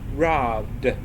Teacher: the last sound in the word rob is b, and b is a voiced consonant